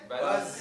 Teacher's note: the Z sound, the Zay sound in Arabic has a buzzing sound